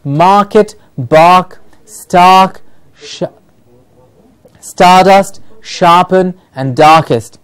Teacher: r in the middle before a vowel it is heard, before a consonant it is silent.